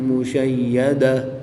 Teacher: گول تا کو وقف کی حالت میں ہا ساکن سے تبدیل کر کے پڑھیں گے۔